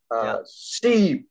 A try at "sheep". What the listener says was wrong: Sheep. Kéo dài ra nào. E. Sheep. Đấy, dài ra, cứ kéo dài ra mà. Bảo mình đang phải làm quá nó lên mà.